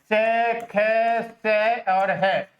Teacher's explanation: उष्म जो होती हैं रगड़ खा करके बोली जाती हैं, इसीलिए इनको संघर्षी ध्वनियां भी कही जाती हैं। इनकी संख्या 4 है।